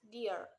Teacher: The position of the mouth in pronouncing the word deer is that the tongue is in front and the lips are widened with the jaws closed. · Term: long vowel sound